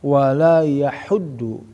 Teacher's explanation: Jadi ha seperti makan pedas ya, ha bersih sehingga masuk yaitu makhraj ha yang ada di tengah-tengah tenggorokan